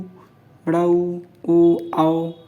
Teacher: आप बोल के आपकी जो लिप्स है वो गोले गोले आकार में आ जाएंगी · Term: वृत मुखी